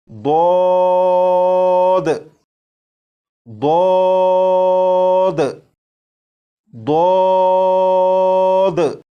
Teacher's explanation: Number 2، اس حرف کو جب آپ پڑھنا شروع کریں تو آواز کو موٹا کر لیجیے گا۔ جب آپ اس حرف کو پڑھنے سے پہلے زبان کی کروٹ کو اوپر کی داڑھوں کی جڑ سے لگا لیں گے، اس کے بعد آواز کو موٹا کر کے اس حرف کو پڑھیں گے تو یہ حرف بالکل درست پڑھا جائے گا، جیسے ضاد ضاد ضاد۔ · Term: پر یعنی موٹا